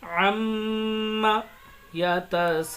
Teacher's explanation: سین کو زیادہ کھینچیں گے، مد آ رہا ہے اس لیے